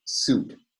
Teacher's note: so suit has a sibilant fricative at the beginning of the word